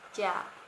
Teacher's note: Jojan bersuara je ya, dengan sara a dibaca ja dengan nada rendah yang artinya akan.